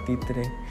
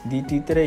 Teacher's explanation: Como por ejemplo cuando dices la palabra títere di títere y te darás cuenta que las cuerdas vocales no vibran no vibran porque la t es una consonante sorda además Presta